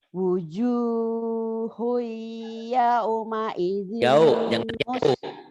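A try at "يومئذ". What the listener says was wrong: jangan yau, jangan yau.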